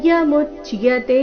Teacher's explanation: ಅವ್ಯಕ್ತೋ ಯಮಚಿಂತ್ಯೋ ಯಂ ಯಮಚಿಂತ್ಯೋ ಚಿಂತ್ಯೋ ಚಿ ನಂತರ ಅರ್ಧನ ಅರ್ಧತ ಪೂರ್ತಿ ಯೋ ಚಿಂತ್ಯೋ ಯಂ ಅವಿಕಾರ್ಯೋ ಕಾರ್ಯೋ ಎರಡು ದೀರ್ಘ ಅವಿಕಾರ್ಯೋ ಯಮುಚ್ಯತೆ ಮು ಮೇಲೆ ಆಘಾತ ಕೊನೆಯತೆ ದೀರ್ಘ